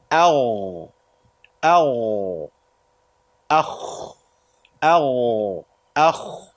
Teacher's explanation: This is from the top of the throat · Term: al-ghayn and al-kha